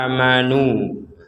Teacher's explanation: Amanu kita baca panjang. Ada harokat fathah bertemu alif. Kemudian nu di sini juga kita panjang karena ada dhammah bertemu waw.